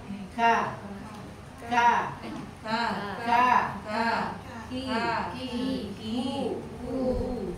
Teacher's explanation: jadi suara tertahan tapi ngalir nafas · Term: huruf Kaf